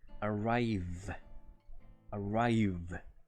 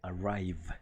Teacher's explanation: Para pronunciar esa V lo más correctamente posible, es un poquito similar al sonido de la F. Lo que hacemos es pronunciar esa V como si mordiéramos el labio inferior con la hilera de dientes superiores.